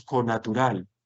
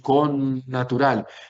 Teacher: como si alargásemos una N alargada que la escribimos dos veces. Bueno, eso es lo que hace el dagesh forte, reduplicar la consonante.